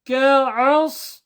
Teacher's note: kaf, back of the tongue, at the back